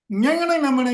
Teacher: மூக்கில் இருந்து அந்த ஒளி வருவதை நம்மால் உணர முடியும்